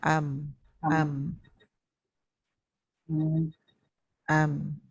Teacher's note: Dia ada ekor suara tetapi sikit tawasud antara ada ekor suara dan tidak. Yang panjang tu itu bunyi dengung, bukan suara yang terlepas